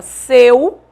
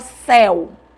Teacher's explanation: Tanto em seu como céu, eu tenho o EU. Só que em seu, E, som fechado. Em céu, é, som aberto. Então, eu acentuo aquele som aberto.